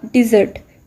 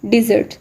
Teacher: इस वर्ड के अंदर 2 syllables हैं और स्ट्रेस लास्ट सिलेबल पे है, यानी कि सेकंड सिलेबल